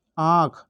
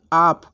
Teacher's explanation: अगर आपको आंख बोलेंगे तो आपके मुख और नाक दोनों जगह से ध्वनि निकलेगी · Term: अनुनासिक